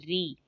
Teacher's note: آگے را کسرہ ری، را کو میں نے پر پڑھا، لیکن جب اس کے نیچے کسرہ آ گئی تو میں نے اس کو باریک کر لیا